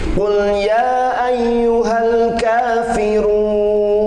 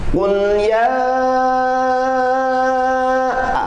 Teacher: nggak boleh dibaca 2 harkat tapi harus 4 harkat. Makanya kita perbaiki dengan bacaan mad jaiz munfasil yang 4 harkat. · Qul ya, itu namanya coret panjang. Nah, dalam hukum tajwid itu disebutnya mad jaiz munfasil. Jadi harus dibaca 4 harakat.